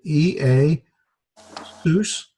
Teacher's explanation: E, A, two vowels that are not diphthongs get separated.